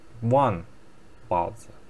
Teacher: if there is a measure word, this kind of attributes, we don't stress them. We will stress baozi because baozi here objective.